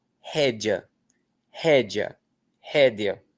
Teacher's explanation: De qualquer maneira, sendo e ou sendo i, o a é o que prevalece e a vogal anterior é apenas uma semivogal, ela é rápida.